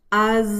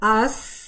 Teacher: जुबान की जो नोक है वो मखरिज पर वाइब्रेट करती है जिससे बजिंग साउंड आता है जैसे कि अज आप देखें कि अगर आप जब आप कहते हैं अस तो कोई वाइब्रेशन नहीं होती।